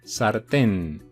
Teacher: es una palabra aguda la sílaba tónica está en último lugar y además como acaba en n hay que ponerle tilde recordar